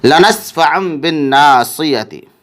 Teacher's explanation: تنوین کا اقلاب ہو رہا ہے کیونکہ تنوین کے بعد با آ رہا ہے، اس لیے تنوین کو میم ساکن سے بدل کر غنہ اور اخفا کے ساتھ پڑھیں گے